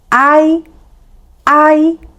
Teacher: So, with a, we open the mouth wide. With i, we don't open the mouth wide.